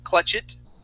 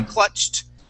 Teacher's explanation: add an ed that sounds like a t okay remember here we went right to that t sound we did not say clutch it we say clutched